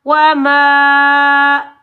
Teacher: چھوٹی مد مد منفصل جائز کو 2.5 سے 3 الف کی مقدار میں کھینچ کر ادا کریں گے